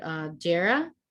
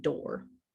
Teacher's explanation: that D sounds like a DJ, like almost a J is attached to it there. And that's because the D is next to an E.